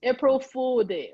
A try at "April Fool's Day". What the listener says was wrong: April Fool's. There's a Z on the end of that. April Fool's Day.